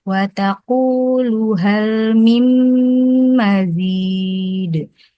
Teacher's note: Jadi ada nunnya kebetulan memang nun yang gundul ya, tidak ada lambang sukunnya. Bertemu dengan huruf mim yang ada tasdidnya, jadi langsung masuk ke huruf mim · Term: Ilgom bi gunnah